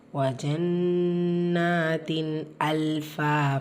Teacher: தன்வீனை தொடர்ந்து அலிஃப் இது ஹார் உடைய சட்டம் உள்ளதை உள்ள மாதிரி ஓதணும் குன்னா செய்யக்கூடாது வஜன்னாத்தின் அல்பா லாம் சுக்குன் பிச்சு ஃபா வந்திருக்கு தெளிவுபடுத்தி ஓதுங்க ஃபா கூடவே